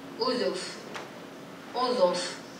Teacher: With this example, you can hear the difference in vowel quality. And in Amazigh, the pharyngalization spread throughout the word, so that's why the vowel quality also changes.